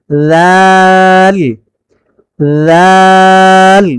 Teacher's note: জিহ্বার আগা সামনের উপরের দুই দাঁতের আগার সঙ্গে লাগিয়ে রাল উচ্চারিত হয়